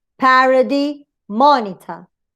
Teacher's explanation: the stress, of course, will fall on the initial syllable, the first syllable